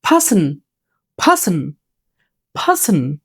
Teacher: আমরা আরটা বলবো না, দেখি পার্সন একটু টেনে বলবো